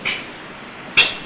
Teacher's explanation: Now we have the word pack, and the letter on the line is P, representing the P, the bilabial, voiceless bilabial plosive